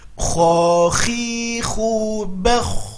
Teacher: mengalir ketika sukun karena dia sifatnya rokhwah.